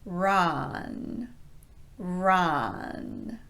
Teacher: for run the tongue is again low in the mouth but the jaw stays pretty neutral it doesn't drop much at all · For ron, the tongue stays low and central in the mouth. The lips are not wide and they're not rounded, they're just neutral.